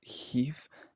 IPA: çɪv